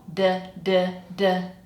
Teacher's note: produced with the tongue touching the alvola ridge inside the mouth, not touching the teeth at all. Du du du. So, your D should sound like that.